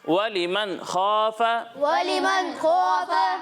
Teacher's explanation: اور یہاں غنہ نہیں کرنا نون ساکن میں